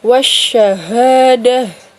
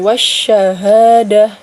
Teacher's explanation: alif lamnya tidak dibaca jelas, jadi langsung masuk ke dalam huruf shinnya ya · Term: alif lam syamsiyah